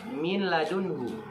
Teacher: Lanya terlihat, tetapi ketika dibaca langsung menyatu nunnya dengan la. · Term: idgham bila gunnah